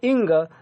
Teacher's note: हैं और उसमें एक बासुरी बज रही है या नाक से इंग तो बोल रहे कहां से गले से और साथ में कौन नाक भी आ रहा है इसलिए इसको हम क्या कहा क्या कह रहे हम नासिक के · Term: नासिक्य